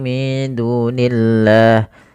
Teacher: pada lafal Allah ketika dia didahului dengan kasrah tidak boleh dibaca tebal lamnya